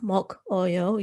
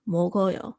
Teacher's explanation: the ending consonant there gets pushed over to that vowel in the second syllable